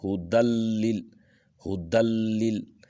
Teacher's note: گے تو یہاں پر جو ادغام ہے وہ بلا غنہ ہے، یعنی نون کی آواز نہیں آنی، نون کو پڑھنا ہی نہیں ہے، اس کو دال کو لام کے ساتھ ڈائریکٹ ملانا ہے۔